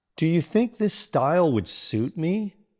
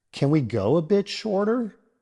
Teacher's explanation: A slight upward pitch at the end. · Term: rising intonation